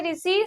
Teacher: री से ऋषि, सबसे पहले ये मूर्धन्य होता है